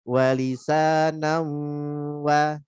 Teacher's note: balik lagi wanya tipis lagi dan jangan lewat hidung